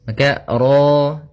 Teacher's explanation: Kemudian pada lafal ra di sini ra tafkhim ra-nya tebal ya kita namakan dengan ra tafkhim ra tafkhim ra-nya tebal.